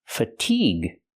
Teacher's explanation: Stress the second syllable. Make the long e sound like green beans. Fatigue. With the hard g sound and the ue is silent.